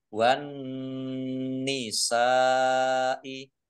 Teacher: Nun tasdid dibaca hunah atau mendengung. Ditahan kira-kira 2 harokat biar tampak dengungannya.